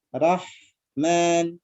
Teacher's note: Hamasnya sudah ada, tinggal rikhwahnya yang mengalir.